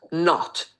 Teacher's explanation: Əslində bu elə bir səsdir ki, o ilə a arasında bir səsdir. Not. Həm o-ya oxşuyur, həm a-ya.